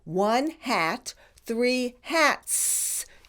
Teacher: When the root word ends with these speech sounds which have no voice, P, T, K, then the S has also no voice.